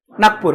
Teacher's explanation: ह्याच्यामध्ये क ची छटा आहे ह्या ग मध्ये